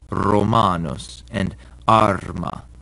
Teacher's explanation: The Romans trilled their letter R and even described this as the dog letter because it sounded like a dog when it growls.